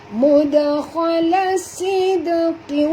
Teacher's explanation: Huruf sad tebal, jangan baca sid. Kalau baca sid bunyi sin ya. Ini baca sad ya.